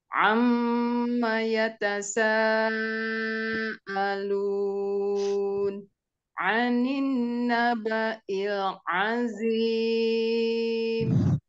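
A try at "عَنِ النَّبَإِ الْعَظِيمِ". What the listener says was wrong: Bunda, sempurnakan nun tasydidnya. sempurnakan nun tasydid. Guna musyaddadah. tasydid itu sempurnakan guna akmalnya. Anin nabail. Anin nabail. Lamain gunanya.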